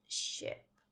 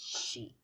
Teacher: did you notice how the lips are not as spread as for E?